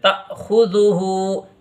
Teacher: یہاں حمزہ ساکن ہے تو اس میں جھٹکا لگے گا. جب بھی الف کے اوپر یہ ساکن آئے گا تو اس میں جھٹکا لگا کے پڑھتے ہیں